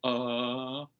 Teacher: sound that doesn't have a one spelling but this schwa it's it's like the most relaxed sound that can come out of your mouth you're just holding your mouth in no particular shape and every other sound requires some tensing of the mouth the